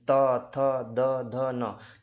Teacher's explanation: त, थ, द, ध, न है ना, इस का उच्चारण करते हो तो जीभ का दांतों से टकराना होता है।